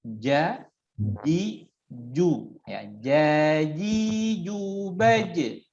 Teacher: Sehingga jim ini menekan ja ya, sama-sama sebutkan ja ya. Tekankan tengah lidah kita ke langit-langit bagian tengah ya.